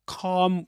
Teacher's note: You don't pronounce the the L consonant.